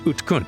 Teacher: the second vowel is dropped · the D and the g end up being unvoiced so they end up sounding something closer to a T and A K